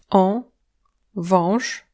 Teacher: Le A avec un ogonek n'est pas un A mais en fait un O nasal. La prononciation exacte de ces deux lettres dépend en fait de la consonne qui suit.